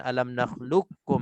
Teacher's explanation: Nakhluqukum ni tak dibacakan dengan qaf, tak dibaca qalqalah walaupun dan sifat pun tak ditebalkan. Kita terus masuk qaf ke dalam kaf, menjadinya sebutan alam nakhluqukum biasa.